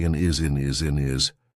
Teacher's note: we've taken away that H completely and we've made it into one word I actually saw a dog in his we just smush everything